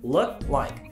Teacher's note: 舌の後ろだけで喉を塞いじゃう